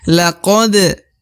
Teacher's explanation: huruf dal atau huruf da dibaca pantul atau qalqalah karena dia merupakan huruf pantul apabila berharokat sukun ya atau mati